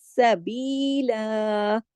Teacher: جب ہم رکتے ہیں تو ایک الف کے برابر اور ایک زبر کے ساتھ اس کو پڑھا جاتا ہے